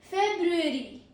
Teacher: Pro tip is first R is often swallowed. The first R here is often swallowed.